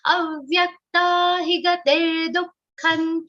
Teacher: dukkha should be said with a speed breaker. Like there is a visarga after du, dukkhan. Sukha is said normally, dukkha always with a little speed breaker.